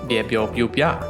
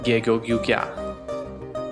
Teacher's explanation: a kind of ghost Y is acting on the consonant to make it softer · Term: palatalized counterpart